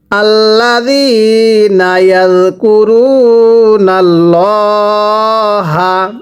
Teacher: আল্লাহ শব্দের পূর্বে জবর থাকলে আল্লাহ শব্দটাকে মোটা করে পড়তে হবে।